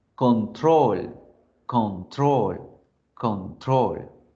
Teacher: ¿Qué pasa con esa? El acento es en la última sílaba, al final de la palabra.